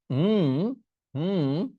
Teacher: শব্দ হয় না ওই টং এর লাস্টের উং সাউন্ডটা করতে হবে উ নাকে আসতে হবে তিনটাই নাকে আসতে হবে